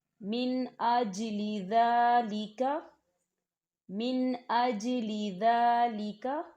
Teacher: حمزہ آ رہا ہے، تو یہاں غنہ نہیں ہوگا، صرف نون ساکن کی آواز کو ظاہر کیا جائے گا لیکن غنہ نہیں کیا جائے گا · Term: اظہار